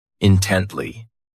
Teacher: This adverb has 3 syllables, and the stress is on that second syllable.